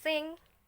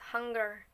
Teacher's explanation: We make them by closing the mouth but opening the nasal passage using the velum. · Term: nasal sounds